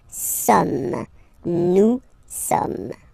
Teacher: So you don't pronounce the final S here. It doesn't exist.